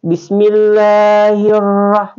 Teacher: Ra itu termasuk dia tafhim, dibaca tebal.